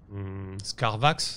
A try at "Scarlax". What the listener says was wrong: Scarlax avec un L.